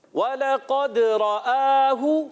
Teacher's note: واو کو ہونٹوں کی گولائی سے ادا کریں گے. لام کو کھینچنا نہیں ہے، لام کو باریک رکھنا ہے. اور قاف حرف مستعلیہ میں سے موٹا ادا کریں گے.